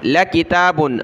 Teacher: لام کو کھینچنا نہیں، لا نہیں، لام زبر لا